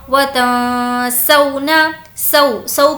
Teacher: سو کو نہیں کھینچیں گے کیونکہ یہ واولین ہے